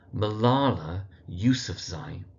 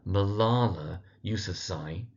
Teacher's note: the Zai in the surname, that third syllable of the surname, gets the emphasis